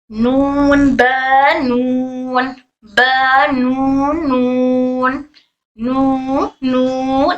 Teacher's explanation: नून ब नून ब नून नून नून नून नाक में भी आवाज हमारी जा रही है नून के लिए नाक में भी हमारा वाइब्रेशन होता है। · ब दोनों होंठ मिलकर दोनों होठों का गीला वाला हिस्सा टच होकर ब अदा होगा।